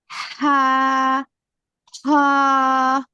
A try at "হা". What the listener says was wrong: এত টান হবে না, এত বেশি টান হবে না। হা, হ, দাল, ওগুলো একটু বেশি টান হবে।